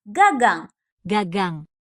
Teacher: Bagian belakang lidah kamu menekan langit-langit mulut bagian belakang dan lepas. Bunyi G akan keluar dengan mantap. · Jangan lupa sentuh leher kamu pas ngomong G. Ada getaran di situ karena bunyi G bersuara.